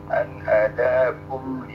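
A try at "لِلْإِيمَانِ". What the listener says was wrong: lil, jangan li tapi lil iman. An hadakum lil.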